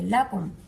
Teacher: لاکم نہیں پڑھیں گے کہ لام کھینچا جائے، فوراً ختم کریں گے